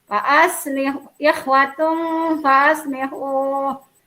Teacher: karena tanwin bertemu sama huruf fa, maka tanwin dibaca samar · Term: ikhfa